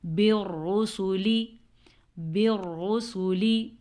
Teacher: را کو پر پڑھیں گے را پہ زبر کی وجہ سے، اور لام کو باریک پڑھیں گے. لام کو ہم موٹا کر ہی نہیں سکتے.